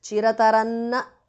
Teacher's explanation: The Anuswara changes to n there.